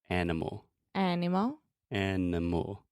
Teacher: So the middle sound, are you recognizing the pattern that the schwa occurs in that unstressed middle sound?